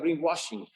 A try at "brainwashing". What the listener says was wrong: he should he should put the emphasis on brain